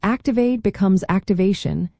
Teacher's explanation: the T turns into a sh sound